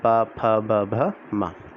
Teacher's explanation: और जब आप इनका उच्चारण करेंगे तो आपको दिखेगा कि ओठ जो हैं वो आपके स्पर्श हो रहे हैं बोलने में, ठीक है। तो ये उसका उच्चारण स्थान है, इसलिए इन्हें ओष्ठ व्यंजन बोला जाता है, पा, फ, ब, भ, मा।